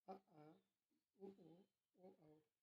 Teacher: जिन स्वरों का उच्चारण करते समय जिह्वा का अंतिम भाग सक्रिय रहता है उसे पश्च स्वर कहते हैं